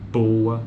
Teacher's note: quando alguém disser aqui a consoante ou esse segmento vocalico consonantal é bilabial é porque envolve principalmente os lábios inferiores e superior